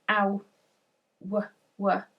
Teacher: our mouth is changing shape quite significantly. It's becoming sort of taller and narrower rather than sort of wider